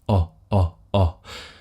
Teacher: my lips are round, but they're not tight, they're relaxed. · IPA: ɒ